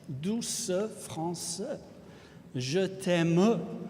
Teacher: when the final syllable is a mute E, and when that mute E is pronounced, that gives a very striking effect.